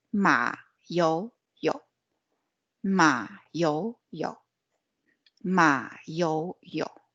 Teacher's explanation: you can kind of pronounce Ma as go down, Ma. And then you go up, Yo, and then you go down, Yo.